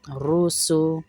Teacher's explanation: موٹا کریں گے را کو روسو. سین پہ سختی اور سیٹی آئے گی